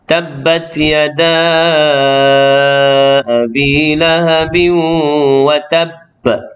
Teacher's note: Masuk dulu ke dalam tasydid ba, barulah detak ba tu. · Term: qalqalah kubra